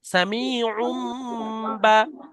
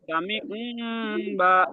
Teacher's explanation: সামি উন বা। হ্যাঁ, যখন বাটা মিলিয়েছেন তখন আর আইন দু পেশ উন পড়বেন না, তখন আইন দু পেশ উম পড়বেন, মিমটা পড়েন।